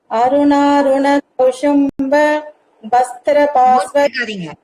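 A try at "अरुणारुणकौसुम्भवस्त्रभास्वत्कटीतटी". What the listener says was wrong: மூச்சு எடுக்காதீங்கம்மா. அருணாருண கௌஷும்ப வஸ்திரபாஸ்வத் கடீதடீ அப்படிதான் சொல்லணும். அந்த இடத்துல மூச்சு எடுக்காம அப்படியே தம் கட்டி சொல்லுங்கிறத ஞாபகம் வச்சுக்கணும்.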